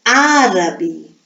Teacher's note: o assento está na antepenúltima sílaba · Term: proparoxítona